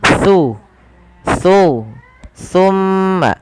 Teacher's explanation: Huruf sa ini tempat keluarnya adalah ujung lidah bertemu dengan gigi seri atas. Jadi ketika kita melafalkan sa, pertemukan antara lidah kita, ujung lidah kita dengan gigi seri atas.